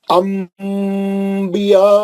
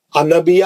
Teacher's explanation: جب بھی نون ساکن اور تنوین کے بعد با آئیں گا تو ہم نون کی آواز کو میم سے بدل کر غننے سے پڑھیں گے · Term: اقلاب